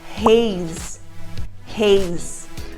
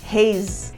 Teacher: a gente não pronuncia o e então ele vai terminar com o som do Z